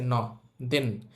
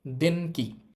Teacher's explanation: যেহেতু ন এর পরে কালাইনের বর্ণ আছে ন এর উচ্চারণটা হবে অং